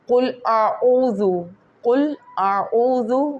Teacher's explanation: قل، قل کو بالکل حلق سے قاف نکلے گا، قل، قل عین کا مخرج جو ہے وہ بھی حلق سے بالکل نکلے گا